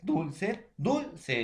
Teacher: lleva la mayor fuerza de voz en la penúltima sílaba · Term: grave